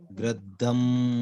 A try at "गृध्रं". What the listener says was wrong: गिरधम शब्द के जगह गिरध्रम ऐसा बोलिए, ध्र है वो, ठीक, ध्रम बोले।